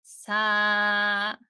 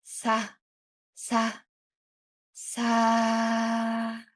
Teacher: Imagine mixing in some breath into the voice. Let some air keep flowing through the vowel. sa sa sa gentler and lighter.